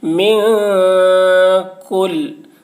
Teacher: اب نون ساکن کے بعد حروف اخفا میں سے کاف آ رہا ہے، اس لیے نون کی آواز کو ناک میں چھپا کر پڑھیں گے، اس کو اخفا کہتے ہیں